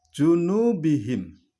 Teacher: Nu di situ panjang, yaitu mad tabi'i.